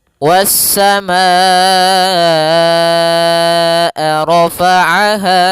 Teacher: Kemudian hamzah tersebut pada satu kata sehingga dinamakan muttasil bersambung. Panjang untuk mad wajib muttasil yaitu empat harakat atau lima harakat. Dalam sebuah riwayat kedua-duanya kuat.